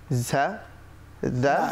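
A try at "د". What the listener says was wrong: দা নরম হবে, দা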